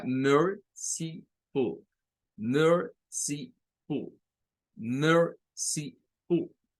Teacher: Recuerden que esta tónica va, sílaba tónica, merciful, merciful, merciful. Las últimas 2 no tienen fuerza de voz, ¿verdad? Solo la primera.